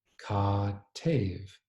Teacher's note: a long a vowel, which is simply an a-vowel that's pronounced longer than a short a vowel , followed by an e vowel. So, in this case, “ka